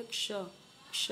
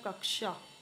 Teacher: मैंने भी बताया था आपको ये क और श। यानी आधा क और श को मिला के क्या बना? ये क्ष। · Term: संयुक्त व्यंजन